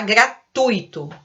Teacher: É junto, o tui, e é uma palavra paroxítona